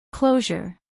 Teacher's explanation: a pronunciar en inglés por hablantes nativos closure dos sílabas closure acentuación en la primera sílaba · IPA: ˈkloʊʒər